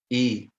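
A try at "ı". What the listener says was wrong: ई नहीं, ऊपर वाले हिस्से से।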